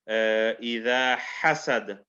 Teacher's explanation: So the ha comes from the middle of the throat, and we do qalqala here.